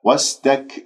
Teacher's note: سين يجري فيها الصوت النفس صفير